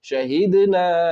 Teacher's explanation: صاد ضاد طا ظا فا قاف کاف میں سے تا ہے، نون کی آواز کو ناک میں چھپا کر پڑھیں گے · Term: اخفا